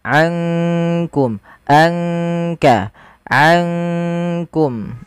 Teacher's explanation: Maka ankum langsung kepada makhraj disamarkan kepada makhraj kaf. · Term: ikhfa